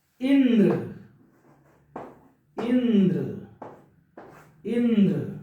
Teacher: ई पे बल दिया जा रहा है ना के साथ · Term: बलाघात